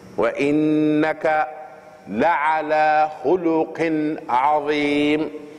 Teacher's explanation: And there's an idhar here of the tanween on the qaf and the letter ayn come after it. And idhar means to pronounce the letter that come after the tanween the way it's supposed to be pronounced.